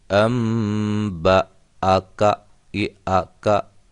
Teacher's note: جب کوئی بھی حرکت آ جائے تو وہ الف الف نہیں رہتا ہے، بلکہ حمزہ میں تبدیل ہو جاتا ہے، تو یہ حمزہ ہے اب، اس لیے حمزہ کی آواز بیچ میں آئے گی۔